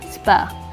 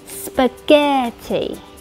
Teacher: trọng âm rơi vào âm tiết thứ hai, nên âm tiết đầu tiên phát âm thành âm uh